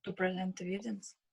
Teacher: Why the stress is on the second syllable? Because it is a verb.